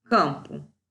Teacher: Uma vogal nasal, nasalizada pelo M, tônica.